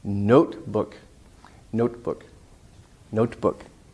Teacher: the main part has more stress and it's a long vowel · we often don't release the air if it's at the end of the word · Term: no release of air